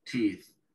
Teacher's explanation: se pronuncia como una I larga en inglés, que es una vocal que nosotros no tenemos. Tenemos la I común y la alargamos un poquito más y podemos lograr el sonido, ¿sí?